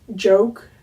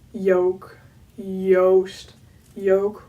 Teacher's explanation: it's also not an English J it's a Dutch J which is like softer